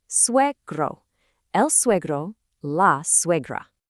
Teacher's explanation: We have a strong we sound followed by a gr.